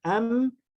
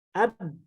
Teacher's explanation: am ke hidung, ab tidak ke hidung. Kalau ba nanti ke hidung jadi mim.